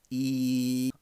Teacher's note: e is an unrounded vowel because the lips aren't rounded